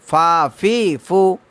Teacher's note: নিচের ঠোঁটের প্যাট সামনের উপরে দুই দাঁতের আগার সঙ্গে লাগায়া উচ্চারণ হবে কি ফা